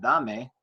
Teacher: so stress is on the da